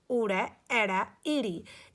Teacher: ਇਹਨਾਂ ਨੂੰ ਉਚਾਰਨ ਵੇਲੇ ਸਾਡੀ ਹਵਾ ਕਿਤੇ ਵੀ ਨਹੀਂ ਰੁਕਦੀ ਗੀ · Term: ਸਵਰ